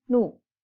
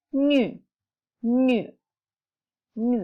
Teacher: Ada kayak y-nya di tengah-tengah n sama u itu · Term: u titik 2